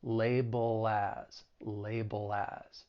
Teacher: And then if we're following it with the word as, I told you that's a common phrase, well then we can link that dark L with the beginning vowel sound in as